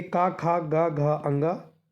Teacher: का वर्ग के सारे व्यंजन का खा, गा, घा और अंगा होते हैं, ये सारे के सारे कंठ्य कहलाते हैं